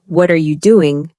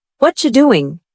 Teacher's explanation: The words aren't separate anymore. They're joined together almost like one long sound. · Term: connected speech